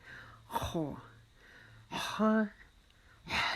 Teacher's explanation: تو یہ ہم اس کو موٹی آواز میں ادا کریں گے اور ہماری زبان کا جو پچھلا حصہ ہے اس کو ہم اوپر اٹھائیں گے. اس کی آواز ایسی آئے گی جیسے ہم اپنا گلا صاف کرتے ہیں